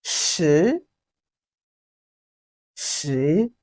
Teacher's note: it has the rising tone of chinese language which is the second tone